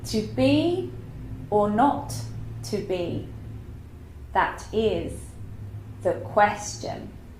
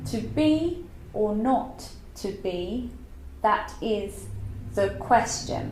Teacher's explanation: It's not actually iambic pentameter because it is not 10 syllables. It was 11. And the very last sound, shun, was an extra sound.